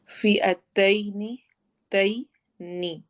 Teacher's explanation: فی یا مدہ ہے، یا ساکن سے پہلے زیر کسرہ آ رہی ہے، تو ہم اس کو لمبا کریں گے 2 حرکہ